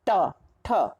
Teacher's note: मूर्ध्य वर्ण, जिनका उच्चारण मूर्धा से होता है, जैसे ट, ठ, इनके उच्चारण में जीभ हमारी मूर्धा को, मूर्धा मतलब जो ऊपर का भाग है, और इसको जीभ हमारी जब मूर्धा को छूती है तो थोड़ी सी घूम जाती है, इसलिए इनको मूर्ध्य वर्ण कहते हैं।